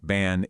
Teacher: that slightly nasal a sound in a word like ban is well, it's just what happens when an N is coming up.